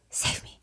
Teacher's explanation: And it sounds like a very breathy low save me. You can barely hear him.